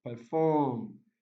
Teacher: Yes, primary stress is on the second syllable.